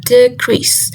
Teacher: in the word decrease, as a noun, decrease, the stress falls on the de, which is the first syllable